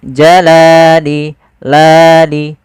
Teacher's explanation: Kemudian pada lafal li ada fathah bertemu alif. Ini kita namakan dengan bacaan mad thabi'i. Panjangnya berapa? Panjangnya adalah dua harakat. Yaitu kita memanjangkan lamnya.